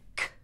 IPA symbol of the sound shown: k